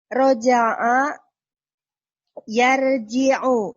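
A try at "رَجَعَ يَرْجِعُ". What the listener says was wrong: Ahsan, bagus.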